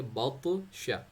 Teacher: اب طا کو باؤنس پہ پڑھنا ہے، ہیوی پہ پڑھنا ہے، اسے دونوں صفات اس کے اندر ہے.